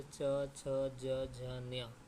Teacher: च वर्ग का उच्चारण कहाँ से होता है देखेंगे तो तालु से होता है। ठीक है, तालु या तालव्य, तो तालु से उच्चारण होता है च वर्ग का।